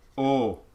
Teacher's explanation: most esl accents english as a second language accents they don't do the diphthong they actually just do oh and oftentimes it'll take the space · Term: pure o, pure O